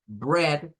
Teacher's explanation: Bread suena a E abierta, pero ahí es donde decimos que la EA hay que tener cuidado.